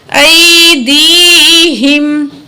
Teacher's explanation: حمزہ زبر یا ای، دال زیر یا دی، ہا زیر میم ہم، ایدیہم. تو یا ساکن ہے، ماں قبل زیر ہے، یا مد ہے، دو الف کے برابر کھینچیں گے یا کو